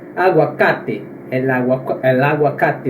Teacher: O A, ele nunca se nasaliza